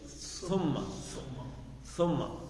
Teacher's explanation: یہ زبان کی نوک دانتوں سے لگنی چاہیے